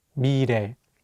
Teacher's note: Let's do another example with the word 미래, meaning future. Here, the 리을 consonant is between the vowels E and 에, so it will have more of an R sound. Let's say it together, 미래.